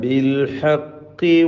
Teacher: ഖാഫിന് കസ്റാണ്, കുറഞ്ഞ തഫ്ഖീം കൊടുത്താൽ മതി.